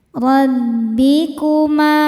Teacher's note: Ra dibaca secara tafkhim karena berharakat fathah. Cara bacanya ditebalkan.